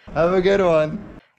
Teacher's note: do you hear how the music or intonation Falls after the final stressed word have a good one that's a falling intonation pattern indicating a statement